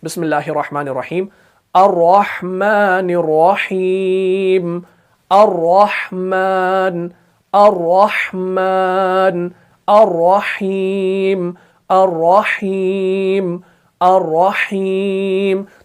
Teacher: तिकरार तो करना है लेकिन ज्यादा नहीं करना है, बिल्कुल हल्का करना है। तो तब जाके हरफ रॉ जो है ये सही तरीके से अदा हो जाएगा। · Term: हल्का तिकरार